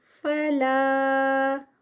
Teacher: یہاں پر مد منفصل 4 کاؤنٹس کا اسٹریچ